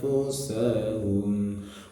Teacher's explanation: nun sukun ketemu huruf Ikhfa hakiki dibaca samar